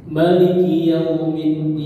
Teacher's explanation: kata Maliki Yaumiddin itu maknanya pendek, tidak banyak panjang